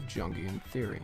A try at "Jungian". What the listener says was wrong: Jung. We are not in the fucking jungle.